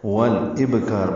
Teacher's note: با ساکن پہ قلقلہ ہے